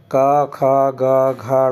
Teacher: कंठ से बोली जाती है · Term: कंठ ध्वनि